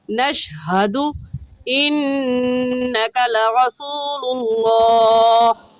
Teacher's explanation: नून मुशद्दद है, नून मुशद्दद पर हमेशा गुन्ना होता है, गुन्ना करेंगे। · हा हलक का आखिर जो सीने की तरफ है उससे निकल कर पढ़ा जाता है, तो निकाल कर पढ़ेंगे नशहदु इन्नका लरसूलुल्लाह।